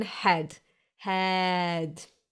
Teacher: like a long loose relaxed and chilled out e